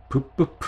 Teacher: 윗 입술과 아랫 입술이 붙었다 떨어지면서 소리가 나잖아요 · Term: 입술 소리